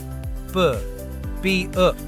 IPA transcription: b